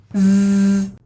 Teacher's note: your vocal cords need to vibrate while you're doing this. it is a noisy sound.